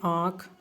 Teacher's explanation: नाक और मुह दोनों से उच्चारण होता उसे क्या बोलते हैं अनुनासिक बोलते हैं चंद्र बिंदी होती है